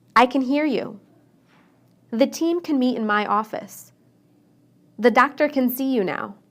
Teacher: When I say can inside a sentence, I shorten the A.